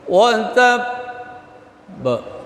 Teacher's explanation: itu ba huruf qalqalah dan ba bertasydid. Ba itu dua huruf. Jadi ada tertahan sedikit.